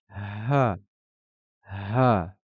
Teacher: Le Ha va se prononcer en expirant l'air de manière la plus douce possible.